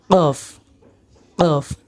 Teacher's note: কফ কফ গলার মাঝখানে আমরা উচ্চারণ করব কফ কফ কফ ক বাংলায় আমরা উচ্চারণ ক মতো না করে অল্প একটু ভিতর থেকে আমরা উচ্চারণটি করব